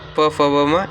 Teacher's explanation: प, फ, ब, म ये ओष्ठ है